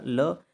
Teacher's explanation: जब हमारी जीवा मूर्धा से टकराती है ऊपर जाके, तो वायु रुकती है, लेकिन वायु अगल बगल से निकल जाती है। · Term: पार्श्विक व्यंजन